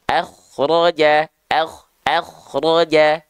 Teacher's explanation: oke k sukunnya sebelumnya berharakat fathah maka k sukun di sini harus kita baca dengan keadaan yang tebal angkat pangkal lidahnya